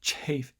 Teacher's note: It looks like I go into a little portion here where it's almost like an aspirated affricate. Like a huh at the tail end. Chafe. Just kind of speaking breathlessly there almost.